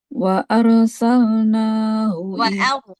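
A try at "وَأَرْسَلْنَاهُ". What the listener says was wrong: Tebal. Jangan wa arsalnahu.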